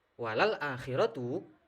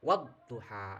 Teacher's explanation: suara lam sukunnya ini masih terdengar